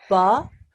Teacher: the ba sound is made by putting the wet parts of your lips together.